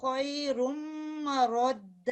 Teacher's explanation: اور ادھر میں نے مارک کیا، ادھر یہ خیر رد، ٹھیک ہے. رد تشدید ہے تو اس کو مضبوطی سے ادا کرنا ہے، اس کو ملانا ہے